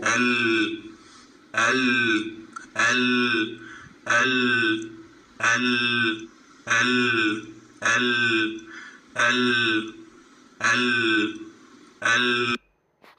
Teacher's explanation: ആയിട്ട് യൂസ് ചെയ്യുന്നതെന്നും നമ്മൾ അതങ്ങ് പഠിക്കുംട്ടോ അപ്പോ നമ്മളിപ്പോ മഹ്റജ് മാത്രമേ പഠിച്ചിരുന്നുള്ളൂ നാവിനെ പൊക്കിയിട്ട് എന്ത് ചെയ്യാ ആ പല്ലിന്റെ ഉള്ളിലോട്ട് പ്രസ്സ് ചെയ്യുക അപ്പോഴാണ് എന്ത് പ്രൊഡ്യൂസ് ആകുന്നത് ലാം ഉണ്ടാകുന്നത്